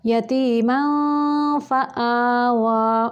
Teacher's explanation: नून या तनवीन का गुन्ना करते हुए फ़ा की शेप देंगे। यतीमन, दोनों जो ऊपर वाले स्नाया उलियाँ हैं उनको निचले होंठों के साथ लगा के तब ये इख्फ़ा निकालेंगे